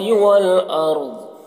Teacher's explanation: یہاں پر جیم یہ علامت ہے، یہاں پر ٹھہریں گے، ٹھہرنا جائز ہے اور ملا کر پڑھ بھی سکتے ہیں۔ تو یہاں پر وقف کریں گے تو ضاد کا جو زیر ہے وہ سکون سے بدل جائے گا